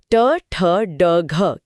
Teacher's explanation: जीभ थोड़ा और मुड़कर कठोर तालु यानी मूर्धा को छूती है जो ट वर्ग ट ठ ड घ की जगह है।